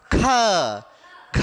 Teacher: ख और घ को बोला तो आपके मुंह से झटके के साथ क्या हुई, आपकी हथेली पर वायु आई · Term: महाप्राण